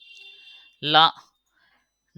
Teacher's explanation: லா இந்த ரெண்டு அந்த லா நாக்கே இப்படி இப்படி மடங்கி வரும் ஓகேவா மேல் பற்களின் அடியை தொடுவதால் லகரம் தோன்றும்